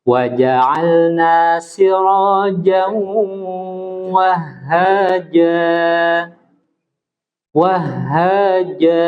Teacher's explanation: ingat huruf jim jangan mendesis.